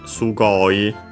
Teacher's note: o i becomes actually long e.